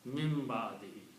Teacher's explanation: Little bit sound, mim, little sound of noon or mim with the sukoon, is sound of gunna comes out light. light nasalization.